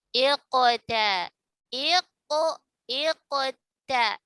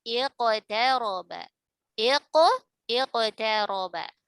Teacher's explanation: Maka tafkhim nisbi tidak terjadi pada huruf qaf ya. Jadi kalau qaf ketika sukun sebelumnya kasrah dia tidak dibaca tafkhim nisbi melainkan tetap dibaca tebal. Kenapa? Karena ada qalqalah mufakhamah.